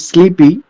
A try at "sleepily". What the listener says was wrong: here the sound is not sleepy. It is sleepily. Sleepily. have to mention because sleepy is different.